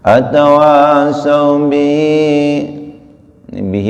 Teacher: menjadi mad silah qasirah 2 harakat